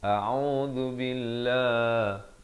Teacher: Lafz jalalah dibaca nipis 2 harakat